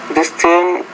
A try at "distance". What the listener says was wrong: And the stress here is distance, not distance, but distance. So stress is on the first syllable, not the second syllable.